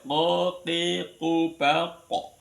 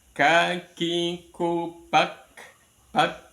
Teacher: Ko itu menekan di anak lidah ya. Ko, ki, ku, ba, ko. Kemudian kalau ka-nya lebih ke depan ditekan ka.